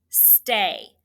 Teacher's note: St, S-T blend, and A. This is an open syllable with that long A sound.